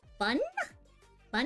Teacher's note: When I say bun, you notice how like my voice goes up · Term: the upward line